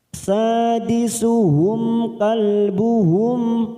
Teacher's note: Sadisuhum, mim sukun bertemu kaf idhar safawi, kita baca jelas tanpa mendengung